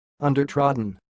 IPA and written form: ʌn-dər-trɒd-n (undertrodden)